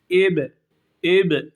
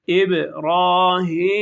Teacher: Bunlar cezimli geldiği zaman ib ib şeklinde sarsılır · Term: kalkale